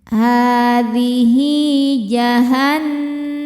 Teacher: Nun tasydidnya dihukumi gunnah musyaddadah karena nun bertasydid. Cara bacanya berdengung, tahan dengungannya kurang lebih 2 harokat. · Hi hukumnya mad silah qasirah karena ada hal dhamir diapit 2 huruf hidup dan setelahnya bukan hamzah. Cara bacanya dipanjangkan 2 harokat.